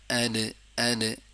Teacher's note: जैसे बाल को दीवार पे मारते हैं और वो वापस आता है इसी तरह आवाज भी दाल को दाल जब जुबान दाल के मखरज के साथ टच होता है तो वापस चोट देते हैं तो उसको अद ऐसे अदा हो जाता है। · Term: कलकला